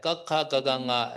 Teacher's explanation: Ya, jadi untuk grup yang pertama ya, grup K ini sebenarnya di masing-masing grup ini dibedakan berdasarkan di mana suara itu muncul gitu ya. Jadi contohnya grup yang pertama grup K ini itu lima-limanya itu muncul dari suaranya itu dari tenggorokan ya. Jadi dalam bahasa Pali adalah kantaja.